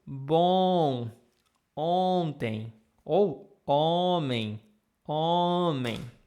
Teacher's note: Sempre esse som de OM, ON é um som, sempre o som nasal é um som um pouquinho mais longo.